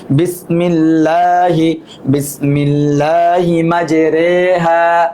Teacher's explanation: এটা হচ্ছে জবর এবং জেরের মধ্যবর্তী পড়াকে ইমালা বলে।